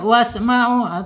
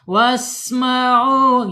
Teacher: Awas sin ya. Ada sifat hamas di sini. Hati-hati, nggak boleh diputus. Nggak boleh wasma'u, harus dihamaskan.